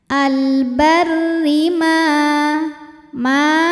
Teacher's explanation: karena ada Alif sebelumnya fathah maka mim dipanjangkan dua harakat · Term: Mad Thobi'i